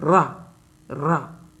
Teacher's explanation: आपकी जीभ दो तीन बार जो है कंपन हल्के हल्के कर रही है · जिन व्यंजनों का उच्चारण करते समय जिह्वा में 2-3 बार कंपन होता है उसे प्रकंपित व्यंजन कहते हैं। जैसे आप रा का उच्चारण करेंगे तो रा रा तो 2-3 बार जो है जीभ को ध्यान से जो है करिए, रा।